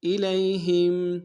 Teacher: یا لین بغیر کھینچے پڑیں گے